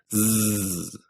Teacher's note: this by putting your hand on your throat and saying z you should feel buzzing in your throat and that buzzing it means that z is a voiced consonant